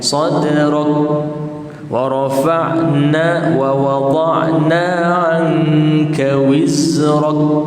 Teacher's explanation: Mati kaf tetapi hembusan tak ada.